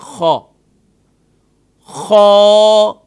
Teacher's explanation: خ کو ادا کرتے وقت اس کے ساتھ ہم الف پڑھیں گے اور اس کی آواز آخر میں جاری رہے گی نہ کہ اسٹاپ ہوگی۔ اکثر اسے ایک غلطی اور بھی کرتے ہیں، خ، یہ غلط طریقہ ہے۔